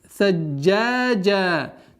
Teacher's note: Удваиваем джим, а потом у нас долгота в размере двух огласовок